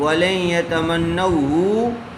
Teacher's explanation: ہا کو جلدی پڑھیں گے، اس کو کھینچیں گے نہیں